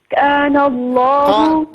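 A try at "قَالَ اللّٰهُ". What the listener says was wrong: کا نہیں قا، قال اللہ، میرے خیال میں لائن ڈسکنیکٹ ہوئی ہے۔ قال اللہ علی ما نقول وکیل، اس کو مکمل فرما لیجیے گا۔ ماشاءاللہ آپ کا پڑھنا اچھا ہے، تھوڑی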